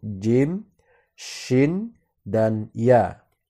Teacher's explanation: huruf yang keluar dari lidah berada di tengah-tengah lidah kita